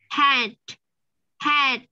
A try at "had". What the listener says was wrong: không không không phải, nó cái âm nó ra từ cái cổ đó. Had. Mình ráng phát là chữ đờ nhưng mà nó không có rõ đâu, nó chỉ là đ, đ, đ. Không cho cái hơi ra ngoài ha. Had.